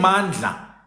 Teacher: The sound Ndla in Mandla, which is the alveolar lateral, voiced alveolar lateral fricative, it doesn't exist in Kiswahili.